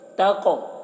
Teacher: یتیم فلا تقہر، یہ قاف میں قاف کو موٹا کر کے پڑھ رہے ہیں اور قاف میں قلقلہ بھی کر رہے ہیں